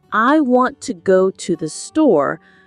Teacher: the words want, go, and store carry the main meaning and are stressed. Listen for this rhythm in native speech and practice replicating it.